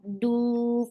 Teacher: for dhamma circular lips, make it 2 counts long